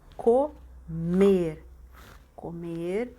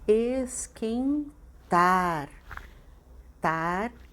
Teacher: a sílaba tônica é a última sílaba